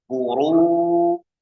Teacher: Ro dhammah tebal, ru. Maka wawu sukun jangan sampai ditebalkan, tapi tipiskan.